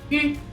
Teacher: en francés se dice u y es un sonido muy delicado es como si fuese la i pero con la boca más cerrada